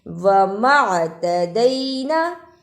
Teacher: جب جزم ہوتی ہے تو تھوڑا جھٹکا لگایا جاتا ہے۔